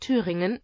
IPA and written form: ˈtʰyːʁɪŋən (Thüringen)